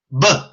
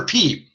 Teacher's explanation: A B is a voiced P.